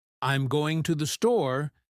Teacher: you'll hear the emphasis on going and store, but I'm and to the are barely noticeable